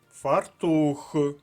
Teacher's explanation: фартух наголос на другому складі